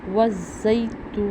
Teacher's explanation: ہم نے تو کو اس لیے لمبا کیا کیونکہ یہ بھی پیش آ رہا تھا اور آگے واو ساکن تھی، ایک الف کے برابر لمبا کیا.